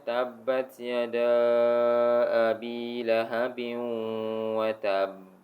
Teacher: So, dia ada delay sedikit lah dalam 1 second macam tu. Sebab dia ada syaddah. Dia kena syaddahkan dia, tasdidkan dia ni. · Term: qalqalah akbar